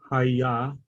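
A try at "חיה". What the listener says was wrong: Chaya, right? With a chet. Chaya.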